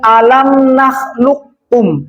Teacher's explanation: fa qafnya dibaca idgham. Jadi seakan-akan bunyinya alam nakhluqum. Jangan sampai dibaca alam nakhluqkum.